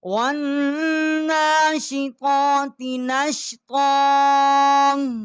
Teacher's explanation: والناشطات نشطا، اور واؤ کو نون کے ساتھ ہم نے مشدد کیا ہے، نون کے اوپر کھڑی زبر ہے، ایک الف جتنا آواز یہاں بلند کی ہے